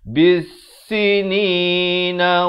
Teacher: Alif lam syamsiah, lam tidak dibunyikan